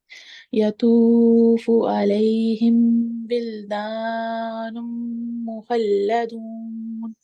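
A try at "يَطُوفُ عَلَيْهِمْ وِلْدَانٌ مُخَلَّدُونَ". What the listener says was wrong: बिल्कुल हिम जो है ना यहाँ कोशिश करें गुन्ना ना करें, ठीक है, सिर्फ मीम को जाहिर करें।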